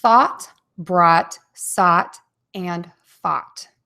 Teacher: oval mouth, wide open, and the tip of the tongue is in the bottom of the mouth and the back is kind of pulled up a little bit as well. And this is a shorter vowel, ah, as opposed to the ooh, oh, those are longer.